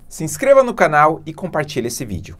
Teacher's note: aqui eu abaixei a entonação da voz no final